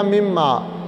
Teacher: نون ساکن کے بعد جب لفظ میم آ جائے تو نون کا میم میں ادغام ہوتا ہے